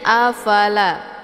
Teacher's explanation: La Ini dibaca panjang dua harakah ini dinamakan dengan mad thobii Zahir tandanya ada Alif sebelumnya haraka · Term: mad tabi'i zahiri